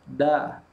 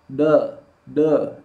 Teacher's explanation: Penuhi hak dari fathah, yaitu ada gerakan rahang membuka. Da. Kalau tidak membuka, de.